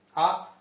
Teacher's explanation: आ बोलेंगे तो मात्रा थोड़ी लंबी खींचेगी, आ तो उसको समय ज्यादा लग रहा है तो वो दीर्घ स्वर कहा जाता है आ।